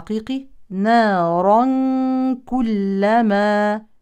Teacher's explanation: تنوين يليه كاف يعني اخفاء حقيقي